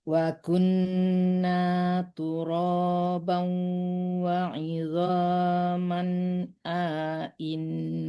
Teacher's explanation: A-nya tidak panjang karena hamzahnya dua-duanya ada harakatnya. Inna jangan dipanjangkan di A-nya.